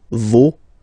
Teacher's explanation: even if you've got this final s, you don't pronounce it